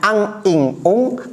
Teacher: ikhfa ab'ad ini suara dengungnya lebih dominan, lebih banyak porsinya daripada suara ikhfanya atau samar. Karena jauh dari makhraj nun.